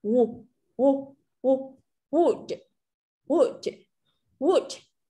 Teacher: Chúng ta không thể bật được ra cái âm w mà chúng ta chỉ bật một ít thôi.